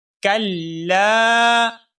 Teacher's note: اب یہاں پر دیکھیے شروع میں کلا، کاف باریک ہے، اس باریک کاف کو ہم لام مشدد کے ساتھ ملائیں گے اور لام مشدد کو بھی ہم ایک الف کے برابر لمبا کریں گے